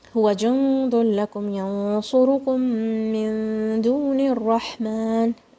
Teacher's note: Now, meme sakin is coming and then a meme shadda. So what will you do? You will say it with one strong meme.